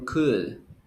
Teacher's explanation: you don't pronounce the l